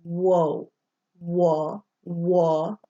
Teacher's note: O is like you are starting to say the long O, but you don't close your mouth.